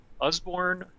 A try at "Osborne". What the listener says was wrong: It should be an O at the beginning.